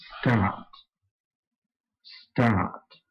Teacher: the word start is on a slightly lower note, and not only that, it falls as you say it.